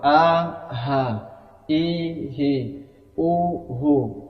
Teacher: untuk huruf hamzah ya mengucapkannya di dari pangkal tenggorokan ketika dibuka pita suara langsung keluar